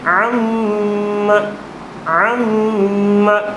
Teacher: میم کی، میم مشدد کی آواز ناک میں جا رہی ہے